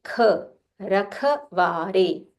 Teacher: Use a Mahaprana kha with aspiration.